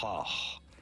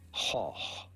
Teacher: The G is not pronounced like a G, but like a H. Goch. Same sound at the beginning and at the end.